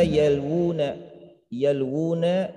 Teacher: ini adalah tamkin, perkuat, perkokoh, ditegaskan bahwa wawunya itu dibaca panjang